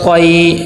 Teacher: اور اس سے آگے طا یا زبر طی، یہاں پہ دیکھیں یائی لین ہے اور یائی لین کو نرمی سے پڑھتے ہیں اور طا حروف مستعلیہ میں سے ہے، اس کو موٹا کر کے پر کر کے پڑھیں